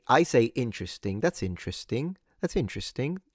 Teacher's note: I've always said interesting, kind of stressing it at the beginning.